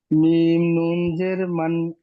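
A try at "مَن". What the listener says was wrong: না, জের নেই, জাবার আছে দেখেন।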